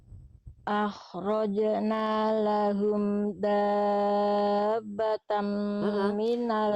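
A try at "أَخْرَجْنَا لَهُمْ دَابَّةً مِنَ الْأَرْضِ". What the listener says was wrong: Banyak ditasdidkan lebih kuat lagi dulu Bunda. akhrajna lahum dabbatan minal ardi tukallimuhum dan seterusnya. Cuman tadi di sini Bunda fathatain ketemu mim, idgham bigunanya. Cepet tadi los.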